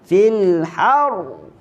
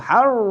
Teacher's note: mengangkat suara ketika menyebut huruf ra, tetapi jangan menggetarkan. Fil har.